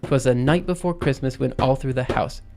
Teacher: every single foot we have two unstressed syllables with a stressed syllable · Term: anapestic